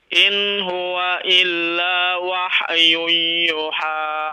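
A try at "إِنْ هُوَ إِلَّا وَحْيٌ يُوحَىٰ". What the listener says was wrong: Wahyun yuha. Nah, 2 harokat ya. Nah, yuha. Dipanjangkan, ada waw di situ kan?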